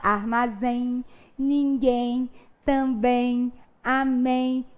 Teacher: toda vez que a gente vai pronunciar essas palavrinhas terminadas por EM, nós pronunciamos um fonemazinho a mais, que corresponde ao som da letra I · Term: ditongo